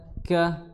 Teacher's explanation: kaf, ya, di pangkal tenggorokan bertemu dengan pertengahan langit-langit atas